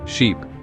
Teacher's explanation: Feel how your mouth stretches a bit more, and the sound lasts longer. · This sound is almost twice as long as the short I, and your tongue is a little higher in your mouth. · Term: long I sound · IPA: /iː/